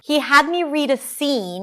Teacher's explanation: she raises her pitch again, notice the intonation- rising-falling-rising. 'scene', something else is coming up.